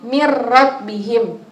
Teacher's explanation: Nah itu caranya langsung dimasukkan tapi tidak mendengung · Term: memasukkan tapi tidak mendengung